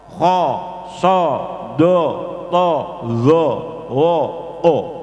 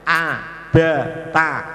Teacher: Huruf-huruf ini namanya huruf isti'la, huruf yang bersifat isti'la. Semuanya huruf ini dibaca tafkhim semua, maka fathahnya jadi o